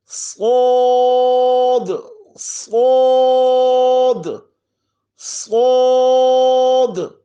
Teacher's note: صاد میں سیٹی کے ساتھ، سیٹی کے بعد آواز کو موٹا کر دینا ہے